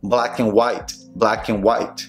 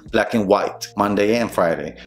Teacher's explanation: Quítale la D al final cuando la estés pronunciando a la palabra I en inglés, and, y vas a sonar mucho más rápido cuando hagas la conexión de dos palabras. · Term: reducir la D